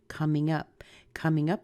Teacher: up is going to be a little stronger than come. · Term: phrasal verb